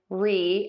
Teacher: Your tongue is going to be nice high and tense and flat for that re. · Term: long e